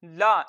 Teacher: तो हमने इसको पढ़ना है लाम जबर ला, इसको लंबा नहीं करना क्योंकि इसको जबर को लंबा करके नहीं पढ़ते। लाम जबर ला।